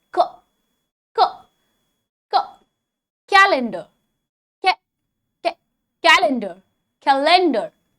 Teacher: Just as a calendar showcases the days and months in a year, its first syllable should be showcased first by emphasizing on the k